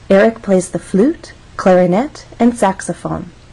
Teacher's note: until we get to the final item of the list so we're actually going to go up on flute then we'll go up again on clarinet this is our final item in the list so we're going to go down · of syllables makes a difference in How We rise or fall flute has one syllable so we only have one syllable to make our voice Glide up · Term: Rising intonation